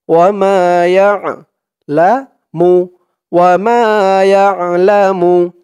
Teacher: আইনের উচ্চারণটা গলার ভেতর থেকে শক্ত করে বের করতে হবে